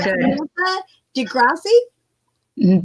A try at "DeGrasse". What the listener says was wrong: Don't pronounce the E. DeGrasse.